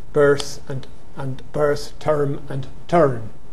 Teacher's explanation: It would have been e, e, and u. They centred to schwa before non-prevocalic r, so that birth and berth, term and turn fell together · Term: nurse merger